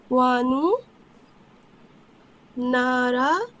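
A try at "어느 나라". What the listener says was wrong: আমি কি ওয়ানু শুনলাম? অনু, অনু।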